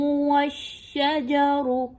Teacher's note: شین اور واو آپس میں مضبوطی کے ساتھ ملائے جائیں گے چونکہ شین کے اوپر تشدید کی علامت آ گئی ہے